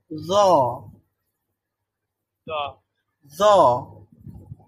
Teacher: তো আমাদের ওই জিহ্বার আগা বা জিহ্বার অগ্রভাগ, এটা সামনের উপরের দাঁতের অগ্রভাগের সাথে সংযুক্ত হয়ে উচ্চারিত হবে জ।